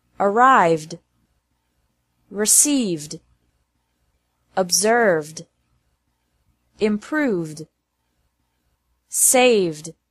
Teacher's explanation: pronounced like d after verb verbs ending with a V sound